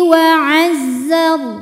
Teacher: Ra sukun dibaca secara tafkhim sebab huruf sebelumnya berbaris fathah, maka dibacanya tebal.